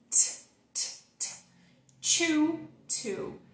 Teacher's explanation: É como o T do português, só que ele tem um arzinho ali saindo na frente. O arzinho disputa com o contato que acontece da língua com a parte de trás dos dentes.